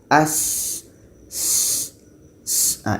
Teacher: Sin ini letaknya pada ujung lidah, menempel dengan bagian atas gigi seri bawah. Jadi kita baca dengan as, as.